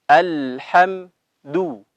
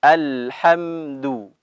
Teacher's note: Dal dalam keadaan atau dalam berharokat dhammah harus dimonyongkan